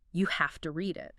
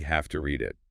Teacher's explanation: It notes that the speaker emphasizes have to. Like you really have to read it, showing strong recommendation.